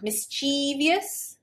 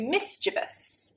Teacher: I've added an extra syllable and I've lengthened the pronunciation, the E sound. Mischievious compared to mischievous.